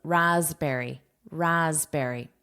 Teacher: notice phonetically it's with that voiced S